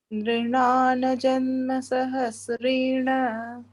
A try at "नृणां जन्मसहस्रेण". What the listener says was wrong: No, only not to say na complete. Nrunan and not nrunana. Nrinan janma sahasrena.